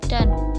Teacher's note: Bunyi A pada kata dan tersebut menjadi puncak silabis dan puncak kenyaringan